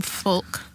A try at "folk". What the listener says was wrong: Folk. You really like to say that L in the word folk. it's folk music. Silent L. Like po folks.